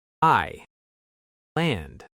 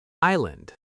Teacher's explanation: This word has a silent S. We don't hear it at all. I land, not Iceland.